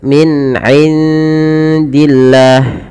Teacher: Kemudian pada lafal min indillah ada nun sukun bertemu dengan huruf dal, maka ada nun ketemu huruf dal, maka dinamakan dengan bacaan ikhfa. Cara membacanya samarkan suara nunnya kepada makhraj daripada huruf dal.